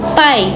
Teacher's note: O A tá mais forte e o I é mais fraquinho